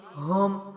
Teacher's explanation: ہم ہے، ہا پیش میم، ہم، ہا سینے کی جانب سے، میم ہونٹوں کی جانب سے، ٹھیک ہے، ملانا ہے، قلقلہ نہیں ہے، سختی نہیں ہے۔